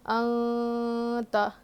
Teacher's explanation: نون ساکن کے بعد حروف اخفا میں سے تا آیا ہے تو یہاں پہ اخفا کر کے پڑھیں گے